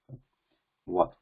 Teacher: the lips are not completely touching, but they are not completely open also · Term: ishat sprishta